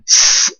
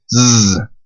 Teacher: Now, if you can't tell, the difference is that when I pronounce z, I'm vibrating my vocal cords in my throat. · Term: voiced